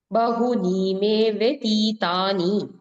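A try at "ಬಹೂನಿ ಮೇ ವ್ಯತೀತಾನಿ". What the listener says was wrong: your main problem is ದೀರ್ಘರಸ್ವ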